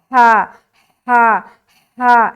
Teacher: हा को जब अदा करते हैं तो हलक से एक हवा की सी आती है, हा हा हा, ऐसा।